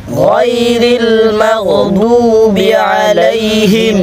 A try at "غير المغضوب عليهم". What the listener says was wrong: مغضو হবে না ضو এখানে ضاد আছে ضاد ضادটা মোটা হবে غير المغضوب عليهم